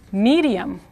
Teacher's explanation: the English D said quickly sounds like the Spanish R between vowels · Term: flap R